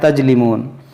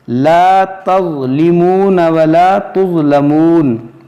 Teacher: اس ضا کو ہمیں موٹا پڑھنا ہے اور نرمی سے پڑھنا ہے